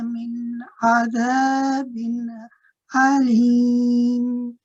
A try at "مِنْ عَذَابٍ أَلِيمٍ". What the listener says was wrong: من عذاب أليم. Just be careful, Papaji. The very last one, this one, is sounding a little bit like a ayn, so relax. من عذاب أليم.